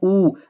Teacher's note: वृत्तमुखी का मतलब वो है बेटा, जब भी हम स्वर का उच्चारण करेंगे तो हमारे होंठ जो हैं वो क्या करेंगे, जैसे मान लो मैं यहाँ पे लेता हूँ ऊ, जैसे आपने ऊ बोला ना, आप खुद प्रैक्टिकल कीजिए, तो आपके होंठ जो है वो वृत्त की आकृति बना लेते हैं, वृत्त की मतलब एक सर्कल बना लेते हैं।